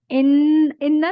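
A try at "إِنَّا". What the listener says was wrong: जी ठीक है।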